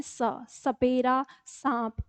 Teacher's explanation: और जब हम दंत का, तो दंत मूल हमारी जीभ का अब अगला हिस्सा किसके नीचे किससे होना चाहिए, दंत मूल को छूना चाहिए, तो स। तो जब हम बोलते हैं स, सपेरा, सांप, हम इस तरह से बोलते हैं, ठीक है।